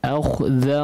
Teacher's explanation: أخذ خاءnya ditebalkan ya